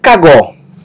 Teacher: sílaba tônica é a última